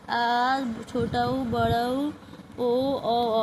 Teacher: पश्च स्वर का मतलब कि जीभ का पीछे का हिस्सा इस्तेमाल होगा ये स्वर का उच्चारण करते वक्त